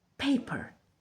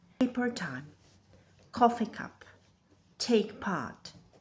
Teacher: Not just sound, an audible burst of air. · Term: aspiration